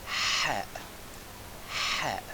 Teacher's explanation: To pronounce this sound, you maintain the sound of h as in horse in English but with more friction in your throat